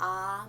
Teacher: मुंह हमारा जो होता है वो ज़्यादा खुलता है। ठीक है, जो जिस सब में मतलब पूरा खुल जाता है। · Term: विवृत